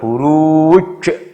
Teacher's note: Ini ada huruf J, hidup, di akhir kata, bacanya mantul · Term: qalqalah